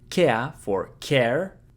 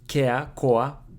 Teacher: The Japanese a to replace the English r